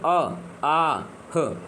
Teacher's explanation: ये जो है कंठ से बोले जाने वाले हैं